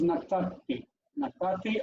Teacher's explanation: Natan, when you add the T subformative, I, natanti, the nun assimilates, it becomes natati.